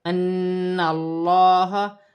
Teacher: نون مشدد میں غنہ ہوگا. ان اللہ، اللہ کی لام سے پہلے زبر اللہ کی لام موٹی پڑھی جائے گی